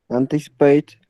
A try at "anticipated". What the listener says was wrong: Anticipated. Ahí sí se pronuncia la ED. Anticipated.